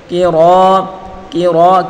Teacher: کاف کو باریک اور را کو پر پڑھیں گے